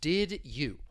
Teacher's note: they blend together to create a new sound in this case the D and Y they blend together and you get this J J sound